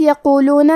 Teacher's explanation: حرف القاف کو موٹی آواز میں پڑھیں گے